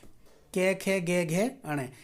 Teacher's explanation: क वर्ग के सभी जो वर्ण होते हैं हमारे पांचों वर्ण, उनका उच्चारण स्थान क्या होता है? कंठ होता है।